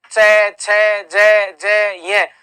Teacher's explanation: इसी च वर्ग का जो उच्चारण स्थान होगा वह तालू होगा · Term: तालव्य